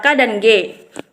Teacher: Contohnya bunyi konsonan dengan artikulasi velar adalah K dan G. Belakang lidah menekankan langit-langit lembut untuk menghalangi aliran udara.